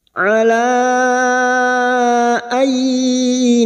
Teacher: Ala ay, nun sukun bertemu ya idgham bi gunnah, nun sukun atau tanwin yang bertemu dengan 4 huruf ini ya, nun, mim, waw, maka nun sukun masuk dengan mendengung masuk pada huruf berikutnya yaitu huruf ya dan mendengung selama 3 harokat